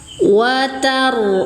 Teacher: roknya baca tafkhim karena sebelum rok berharokat fathah.